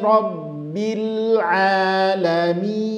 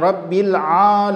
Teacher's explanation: karena Ain dengan lam itu sama-sama huruf tipis maka posisinya senyum saja